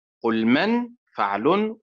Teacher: النبر على حركة القاف من قل وعلى حركة الميم من من